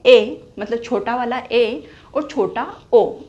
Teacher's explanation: तो इसके अंतर्गत आने वाले स्वर हैं, एग्जाम्पल में लिख लेंगे। ए मतलब छोटा वाला ए और छोटा ओ, इसमें क्या होता है, मुख आधा बंद होता है, आधा बंद होता है, पूर्णतया बंद ना होकर आधा बंद होता है। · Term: अर्ध संवृत